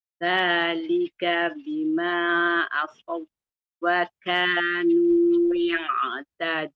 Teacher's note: So kena pastikan sa itu tebal.